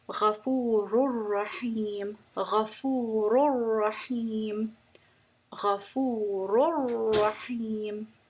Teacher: you're making the sound where you are blending or incorporating the two letters into each other without a ghunna sound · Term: idgham kamil